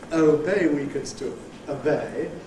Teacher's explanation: now that we've got [ əʊ ] as the strong vowel, it weakens to an ordinary schwa